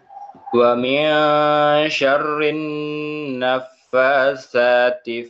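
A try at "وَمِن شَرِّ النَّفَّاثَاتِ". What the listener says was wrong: Roknya tadi masih kurang, masih syarri. Ikhfanya masih ikhfa adana. Kita pengennya ikhfa ausat. Tengok ketemu shin. Wa min syar.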